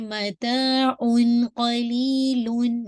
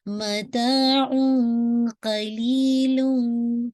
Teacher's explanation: इख़फ़ा करते हैं, sound of the नून साकिन उसको आप हाइड करते हैं